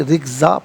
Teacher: وقف کی صورت میں رکزا پڑھیں گے کہ دو زبر کی تنوین وقف میں الف سے چینج ہو جاتی ہے